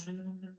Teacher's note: nós vamos perceber que as nossas pregas vocais elas vão o quê? Vibrar.